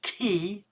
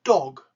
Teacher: You're putting your tongue behind your top teeth and going t, t, t, or t, t, t, t, t, t, t, and you're doing the same thing with your mouth, but you're engaging your larynx. That is, you're using your voice